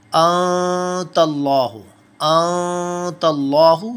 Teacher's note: We will hide the sound of noon in our nose, and our tongue will remain the same between in our mouth, between upper and lower palates, and will not touch the upper palate. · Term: ikhfa